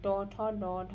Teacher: যে বর্ণগুলি উচ্চারণ করার জন্য জিহ্বা প্রতিবেষ্টিত হয় অর্থাৎ চক্রাকারে ধারণ করে সেই বর্ণগুলিকে প্রতিবেষ্টিত বর্ণ বলা হয়।